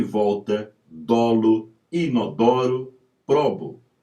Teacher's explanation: Timbre aberto da letra O tônica